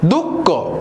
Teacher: असा शब्द आहे बघा, दुःख. दू नंतर थोडासा ह सारखा उच्चार बाहेर पडतो आणि त्यासोबत फुफ्फुसामधून थोडीशी हवा बाहेर पडते, तो झाला विसर्ग. · जेव्हा फुफ्फुसातून हवा बाहेर पडते आणि ह हा शब्द थोडासा झटका देऊन बाहेर पडतो, त्याला म्हणतात विसर्ग.